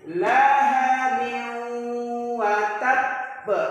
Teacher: Masuk dengan berdengung itu apa? Suara N-nya hilang dan suara kita di hidung. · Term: idgham bi gunnah